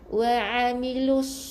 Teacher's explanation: Bunyi sad. Sad di mana hurufnya keluar di hujung lidah, tekan kepada bahagian gusi bawah. Bukan wa'amilus, bukan huruf sin. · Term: huruf sad